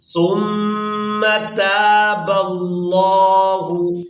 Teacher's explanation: تا کو الف مدہ کی وجہ سے کھینچ کر ادا کیا جائے گا۔ اس کے بعد با کو لفظ اللہ کے لام کے ساتھ ملائیں گے اور لفظ اللہ کے لام کو پورا ادا کریں گے۔